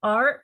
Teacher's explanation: third tone you go down first and then you go up